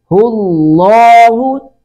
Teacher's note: لفظ جلالت کے درمیان والے لام کو پر کریں گے ، اس سے پہلے پیش آ گئی ہے، پیش یا زبر